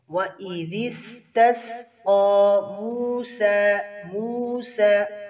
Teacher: قاف کے اوپر کھڑی زبر ہے، ایک الف کے برابر کھینچیں گے